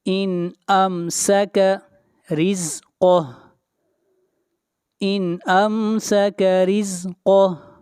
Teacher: یہاں پر را کو باریک پڑھیں گے، را کے نیچے زیر ہے۔ قاف کو موٹا پڑھیں گے، قاف حروف مستعلیہ میں سے ہے، اور جب یہاں پر سٹاپ کریں گے تو ہا کے اوپر سے حرکت گر جائے گی، اور ہا کو ساکن کر دیں گے۔